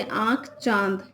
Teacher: अनुनासिक, इसके उच्चारण में हवा नाक और मुंह से निकलती है, जैसे आँख, चांद।